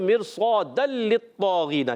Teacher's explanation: ये तनवीन के बाद लाम आ रहा है, इदगाम बिला गुन्ना